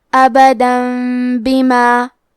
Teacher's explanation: کلمت بما، با حروف القلب میں سے ہے، قلب کا معنی ہے بدل دینا، تو ہم تنوین کو ہلکی میم میں بدل کے اور غنہ کے ساتھ یہ حکم کو ادا کریں گے۔